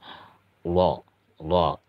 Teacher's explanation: cara melafalkannya, sisi lidah kita tempelkan ke gigi geraham